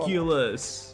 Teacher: Notice which syllable is stressed. In the case of the word ridiculous, it's the middle syllable.